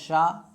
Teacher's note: शा का मतलब हो गया शा। कौन सा शा? दंत शा। इसका उच्चारण स्थान क्या है? दंत है।